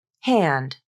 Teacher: you might have just the tiniest bit of voicing at the beginning of the D but because of the way the n and D are articulated · the nasal consonant the N is pronounced normally then the tongue makes a quick little D and then drops from the alular ridge without any voicing at